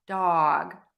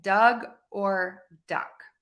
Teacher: think of that ah, that short O sound is an open vowel, ah.